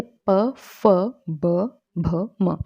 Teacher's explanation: इसके बाद ओष्ठ्य व्यंजन, ओष्ठ्य व्यंजन जिन व्यंजनों के उच्चारण में दोनों ओष्ठों द्वारा श्वास का अवरोध होता है, मतलब श्वास को रोका जाता है, तो वो ओष्ठ्य व्यंजन कहलाते हैं। जैसे प, फ, ब, भ, म, तो दोनों उच्चारण जुड़ जाते हैं और जो हवा होती है अंदर ही रुक जाती है, एकदम से फिर बाहर निकलती है, तो वो ओष्ठ्य व्यंजन कहलाते हैं।